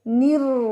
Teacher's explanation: زبان کو اوپر اٹھا کے پڑھیں گے. نر، را کے پر شد ہے، 2 دفعہ ادائیگی ہوگی